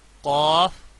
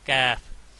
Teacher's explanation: ہیں، یہ جو گلے میں جو لٹک اوپر سے ہوتی ہے، یہ قاف لٹک کے تھوڑا پیچھے سے نکلتا ہے موٹا کاف، اور یہ کیف لٹک کی اگلی سائڈ سے نکلتا ہے یعنی تھوڑا باریک ہوتا ہے